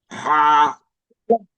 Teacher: গলার ভিতর থেকে পড়তে হবে হা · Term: লম্বা হা